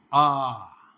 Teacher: विव्रत माने मुंह पूरा खुल जाए, आ पूरा मुंह खुलेगा।